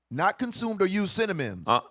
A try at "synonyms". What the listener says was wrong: Synonyms. You said cinnamon? Is it cinnamon or synonym?